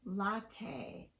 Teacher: is only tapped when the vowel immediately following it is reduced if the vowel after the t is given the same duration as the vowel in front of the t then the t will not be tapped